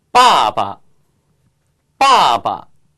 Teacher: 1 2 4성 다음에 오는 경성은 저음이 돼요